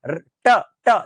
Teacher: इन सब का उच्चारण मूर्धा सबसे ऊंचाई वाले भाग में होता है, जबान ऊपर है।